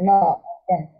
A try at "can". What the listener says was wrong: Okay, can. You're right.